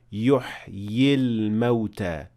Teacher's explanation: the ya with sukoon, which should normally appear at the end of the word, is dropped, because otherwise we will have ya with sukoon at the end of one word, and at the beginning of the word after we have lam with sukoon, since Hamzat al-Wasl is dropped when you keep on reading.